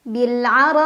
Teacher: Bil'ara'i, ra mad wajib muttasil karena ada mad tabi'i yang bertemu dengan hamzah dalam satu kata. Dibaca panjang boleh 4, boleh 5 harokat.